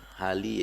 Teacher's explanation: sukar untuk anak keturunan Cina menyebut bunyi getaran. Biasa itu kan jadi L lah